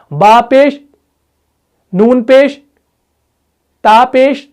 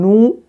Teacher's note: آواز کو میوٹ کرنا، منہ کی حرکت دکھانا، منہ کو گول کرنا، اسی کو اشمام کہتے ہیں۔